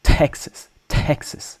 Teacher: It's almost like there's an H after the T like Texas.